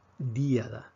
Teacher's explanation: Vemos que la fuerza, en este ejemplo, cae sobre la I. Díada. Entonces, en este caso, puesto que la fuerza cae en la vocal cerrada, automáticamente tenemos que escribir este acento. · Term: acento de hiato